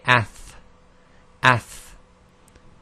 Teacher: When we get to the tha, it's the same, except the tha, the tongue is slightly further out